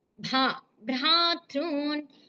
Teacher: ఆ భా అనేది మహాప్రాణాక్షరం, దానికి స్ట్రెస్ ఇవ్వండి.